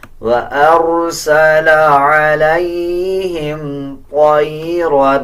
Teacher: طا کو پر یعنی موٹا پڑھا جائے گا، را کو بھی پر پڑھا جائے گا